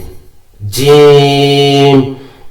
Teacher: আমি 3 আলিফ পরিমাণ সময় নিয়ে এটাকে টানতেছি